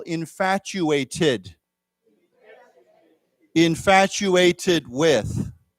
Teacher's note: now remember that T has a ch sound.